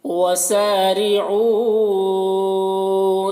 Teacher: سین میں الف مدہ ہے، ایک الف کے برابر کھینچ کر پڑھیں گے، را کو باریک پڑھیں گے، او میں یہ جو مد ہے اس مد کو مد منفصل کہتے ہیں، 3-4 الف کے برابر اسے کھینچ کر پڑھیں گے، ایک الف کے برابر بھی کھینچ کر پڑھ سکتے ہیں۔